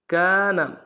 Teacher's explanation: کاف کے ساتھ الف مدہ ہے، ایک مقدار میں کھینچیں گے۔